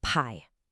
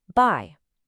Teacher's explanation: For P, your voice is completely off. It's just a whisper followed by a really strong puff of air.